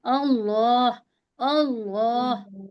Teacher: तो हम थोड़ा लफ्ज अल्लाह को मुंह भर के कहेंगे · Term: मोटा पढ़ना